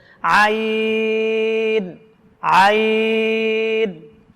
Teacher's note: কণ্ঠনালীর মধ্যখান থেকে আইন উচ্চারণ করতে হবে